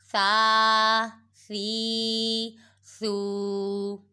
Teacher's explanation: ثا حروف لثاویہ میں سے ہے، اس کو سیٹی کی آواز نہیں نکالیں گے